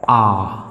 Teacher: किसका विवृत है, मुखाकृति के आधार पर। आखिरकार मेरा मुख पूरा खुल रहा है तो उसे कहेंगे विवृत।